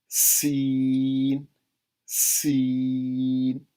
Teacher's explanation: سین میں سیٹی کی آواز بھی آئے گی